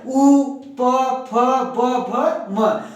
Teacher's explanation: उ पवर्ग प फ ब भ म का उच्चारण हम लोग ओष्ठ से करेंगे, ओठ से करेंगे।